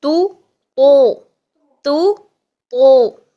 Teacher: तौ को मुंह भर के अदा कर रहे हैं हर कंडीशन में, फतहा हो, कसरा हो, दमा हो, जिस भी कंडीशन में।